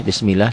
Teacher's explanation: lafaz Allahnya dibaca tipis. Karena sebelum lafaz Allah baris di bawah, kasroh.